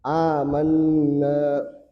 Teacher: Mad badal terjadi ketika ada hamzah ee qat'i, hamzah eh berharakat dengan hamzah sukun bertemu entah ke hamzah qat'i atau hamzah wasal ya bertemu seperti ini misalnya ini ya. Maka hamzah sukunnya ini diganti dengan huruf mad yang sesuai dengan harakat fathah